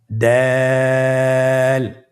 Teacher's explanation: জিহ্বার আগা সামনের উপরের দুই দাঁতের গোড়ার সঙ্গে লাগিয়ে উচ্চারিত হয়। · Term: দালের মাখরাজ